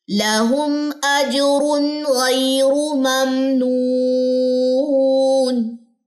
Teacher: میم ساکن کے بعد حمزہ آ رہا ہے تو ہم یہاں پہ غنہ نہیں کریں گے · ممنون واو مدہ 2 سیکنڈ، اور دونوں زیر وقت کی صورت میں ڈراپ ہو جائیں گی.